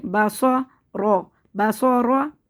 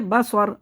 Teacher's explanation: را کے اوپر زبر ہے تو را کو موٹا پڑھیں گے ، تو یہاں پہ بھی را کو موٹا پڑھیں گے، با